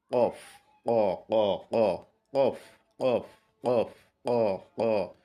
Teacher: কণ্ঠনালীর সাথে তার উপরের যে তালু আছে এটার সাথে একটা ধাক্কা দিয়ে বা এটাকে টাচ করে, যেভাবে আমরা বুঝি, মোটা আওয়াজে কফ বের করব।